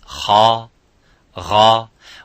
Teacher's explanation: the point of articulation is the throat it's not the lips